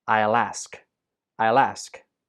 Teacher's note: possible in this sentence I will gets contracted to become I'll the l sound at the end of will links to ask and ask gets stressed so alt together it sounds like this